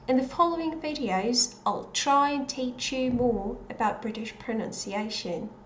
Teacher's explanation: So I didn't pronounce the second element of the I diphthong